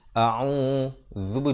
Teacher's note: Hamzah di pangkal kerongkong, ain di pertengahan kerongkong.